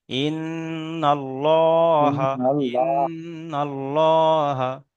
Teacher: হায়ের উপরে যাওয়ার এসছে, যাওয়ারটি হলো হারাকাত, লামের উপরে হারাকাতের পড়া লামের উপরে খাড়া জাবার এসছে, খাড়া জাবার আলিফ মাদ্দার সমতুল্য, তাই খাড়া জাবারকে এক আলিফ পরিমাণ টান দিয়ে পড়তে হয়। হায়ের উপরে জাবার এসছে, জাবারটি হলো হারাকাত, হারাকাতের পড়াকে তাড়াতাড়ি পড়তে হয়, টান দেওয়া নিষেধ।